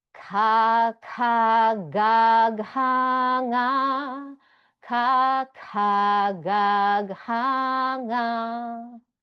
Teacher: So all comes straight up from the throat and hits the roof of the mouth. So that's the most direct, straight up. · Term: first mouth position